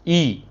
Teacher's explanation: ये आपने लिख दिया संवृत, ई मतलब लगभग जीभ क्या है, आगे की तरफ तालू में सटने को करता है